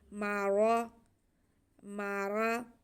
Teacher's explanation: लेकिन पहले हमारे पास मीम पे ज़बर है, रा पे ज़बर है, तो रा को हम पुर पढ़ेंगे, मोटा पढ़ेंगे, और मीम को भी खींचना नहीं है।